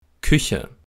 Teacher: Hier ist deutlich zu sehen, dass die Lippen beim Ich-Laut in diesem Fall gerundet sind. Das liegt an dem mit gerundeten Lippen auszusprechenden Ü-Vokal in diesem Wort.